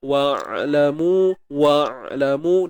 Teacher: Huruf ain sempitkan tengah kerongkong.